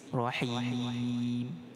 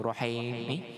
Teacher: Ar-Rahim dengan ra ditebalkan pada berbaris fathah, ra tafkhim